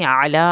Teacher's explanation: आइन को हल्क से पढ़ के लाम की खड़ी ज़बर को खींचना है